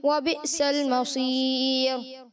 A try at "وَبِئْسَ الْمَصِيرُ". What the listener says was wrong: آخر میں مصیر میں تھوڑا راہ پور کر دیا, باریک کرنا ہے پیارے بچے.